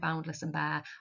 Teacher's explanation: I like the plosive alliteration, and boundless and bare, it sounds quite aggressive and reflecting what nature has done to the statue.